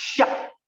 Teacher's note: one character xia, the fourth tone